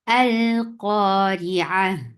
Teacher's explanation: Hamza is very sharp. Sharp means there is no flow of sound. And then there's fatha, and it is attached with lam.